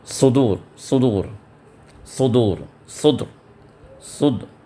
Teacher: صاد کو ہم تھوڑا پر کر کے ادا کرنا ہوگا، سین کے ساؤنڈ سے نہیں